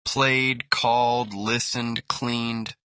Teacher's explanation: D sound after voiced consonants.